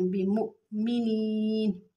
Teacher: یہاں پر بمؤمنین میں ایک بات، یہ حمزہ ساکن آ رہا ہے، تو جہاں پر یہ حمزہ ساکن وہاں پہ ہلکا سا جھٹکا دے کے پڑھتے ہیں